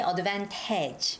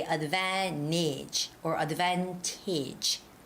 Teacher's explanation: visit our store this weekend you don't say advantage okay because there's no stress on the last a